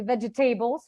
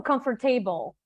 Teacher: when you stress table, you basically lose the veg and the comfort, and it doesn't make any sense.